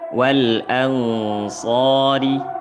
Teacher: ri dibaca nipis tarqiq karena berharokat kasrah